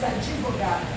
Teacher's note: Você na fonia acrescentou um i pela consoante muda. A esse fenômeno fonológico nós chamamos de epêntese, também conhecido como samprasara.